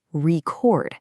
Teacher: if you want to record a message, the stress shifts to the back, record. It goes from a noun to a verb, all decided by that little bit of stress.